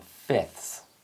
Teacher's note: The f sound may be elided in fifths